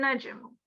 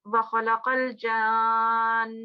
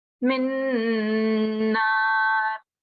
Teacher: make sure that you do have a bit of a pause of the 2 seconds Ghunna sound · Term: Nun Mushaddad